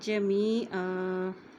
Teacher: یہاں پہ وقف کرنے کی صورت میں، رک ٹھہرنے کی صورت میں دو زبر کی جگہ ہم ایک زبر پڑھیں گے